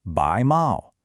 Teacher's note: That's a rising second tone, then a high first tone.